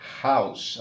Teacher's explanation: Si escucha la pronunciación de la palabra house, tiene una H aspirada, es house, a diferencia de our, que no suena, aquí suena aspirada.